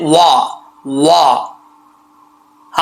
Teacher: अगर होंठ गोल नहीं होंगे तो समझ लेना कि वाव की अदायगी सही तरीके से नहीं हुई। तो वाव पढ़ते वक्त होंठ गोल होंगे